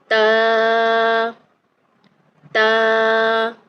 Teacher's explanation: تا کو ادا کرتے وقت ہماری زبان کی نوک جو ہے وہ سامنے والے اوپر والے جو 2 دانت ہیں ان کی جڑوں سے لگتی ہے۔ تا تا۔ آپ دیکھیے کہ آپ کی زبان جو ہے وہ اوپر والے دانتوں کی جڑوں سے لگ رہی ہے۔